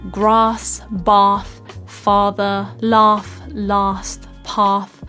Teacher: this R sound where your mouth is like quite wide and open like an ah